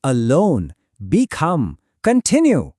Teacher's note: Words that begin with weak prefixes like a, b, con or d words, they usually have the stress on the second syllable prefix because these prefixes are often just unstressed helper parts of the word